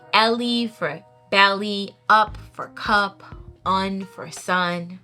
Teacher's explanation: in this type is initial consonant deletion and that's basically where they're just chopping the whole head off of the word